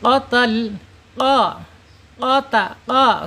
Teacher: makhrajnya ada di pangkal lidah ya. Di pangkal lidah.